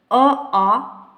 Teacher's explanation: कंठ और निचली जीभ के स्पर्श से बोले जाने वाले वर्ण